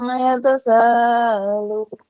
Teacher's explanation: Kurang membuka suara, kurang membuka mulutnya. Jadi terdengar menggumam.